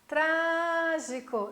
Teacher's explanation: eu puxo no tra, então é a sílaba forte. Então, está em dúvida na sílaba tônica, que é a sílaba forte, faz essa brincadeira de gritar a palavrinha, né, lá para a pessoa do outro lado da margem do rio e a pessoa precisa ouvir.